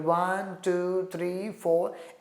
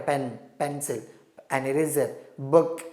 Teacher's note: in enumeration we commonly follow a rising tone